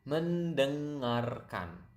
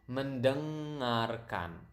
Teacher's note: You can hear the nasal sound there, deng, kind of sound like French.